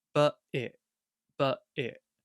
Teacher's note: That's a hard one because I've got two glottal stops.